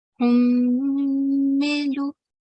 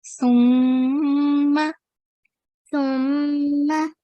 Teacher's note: We have to do a nasal sound and we have to hold it for 2 seconds. Okay, it can't be shorter than 2 seconds. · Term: Mim Mushaddad